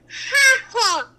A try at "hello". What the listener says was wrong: You're so close. Just say the L's instead of he-o. Put the L's in there. Say hello. But you need to say hello.